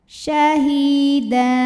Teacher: Da mad iwad karena ada baris tanwin fathah yang diwakafkan, baris 2-nya jadi 1 dan panjang 2 harokat · Hi mad tabi'i dhahiri karena ada ya sukun didahului baris kasrah, maka ha panjang 2 harokat